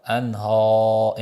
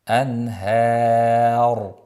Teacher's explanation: Ha ingichka qilib roni o'zida yo'g'onlashamiz.